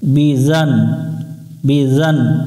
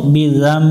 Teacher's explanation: এখানে নুনটাকে আমরা ছোট্ট একটা মিম ধরে উচ্চারণ করে নিব